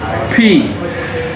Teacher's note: আমরা যেমন এফ শিখেছিলাম, দুই ঠোঁটের মাঝখান দিয়ে বাতাস বের হতো, ঠিক একইভাবে ফি, পি থেকে ফি, মানে ফি, দুই ঠোঁট একসাথে করে ঠোঁটের মাঝখান দিয়ে বাতাস বের হবে